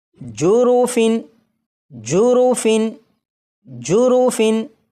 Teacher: تنوین کے نون ساکن کو ظاہر کر کے پڑھوں گا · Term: ظاہر کرنا